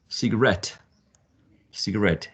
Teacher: me remind you that this work comes from cigar right and there's a shift of the stress to the last syllable